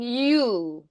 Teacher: the U is more rounded so like uu um it's going to be more pronounced and rounded U you're going to really exaggerate the rounding you and it's more